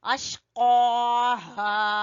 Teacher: क़ाफ को जबान की जड़ से अदा करते हुए अलिफ मद्दा को खींचेंगे